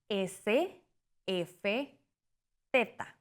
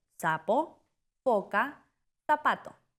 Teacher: Casa pricativos. Se restringe el aire sin bloquearlo totalmente.